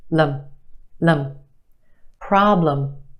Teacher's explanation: The problem is stretched and emphasized in the first syllable. Our second syllable is where you have your schwa